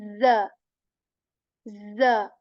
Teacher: Both upper and lower incisors, and we make a buzzing sound, a vibrating sound for this za letter as well, right? So when we place a fatha on letter za, we make this buzzing and vibrating sound, and we say z, z, right?